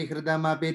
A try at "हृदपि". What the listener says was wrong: I think you're saying, you're putting a ma in that, you're saying hridamapi. It's hridapi.